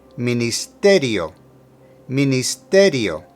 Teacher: for ministerio emphasize the te